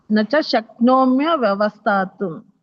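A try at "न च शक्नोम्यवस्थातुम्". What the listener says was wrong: ವವ ಅನ್ನಂಗಿಲ್ಲ ಅಲ್ಲಿ. ಓನ್ಲಿ ಒಂದು ವ ಬರುತ್ತೆ ಮಾತಾಜಿ. ನಚ ಶಕ್ನೋಮ್ಯ ಅವಸ್ಥಾತುಂ. ಒಂದು ವ ಬರುತ್ತೆ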